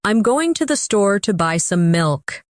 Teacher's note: Notice how certain words are stressed. Going, store, buy, milk. Now try repeating it with the same emphasis.